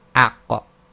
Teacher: It requires the releasing of the tongue from the back of the throat in order to complete the sound, and it's a stoppage of breath again. · this is the extreme back of the tongue touching the uvula. That's the dangly bit, most people call it. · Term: qaf